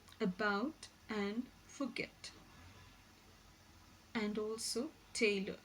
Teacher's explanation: This vowel is described as a central unrounded vowel just below half open position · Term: the short sound